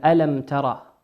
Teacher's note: الميم هنا ساكنة أتى بعدها حرف التاء، والتاء من حروف الإظهار.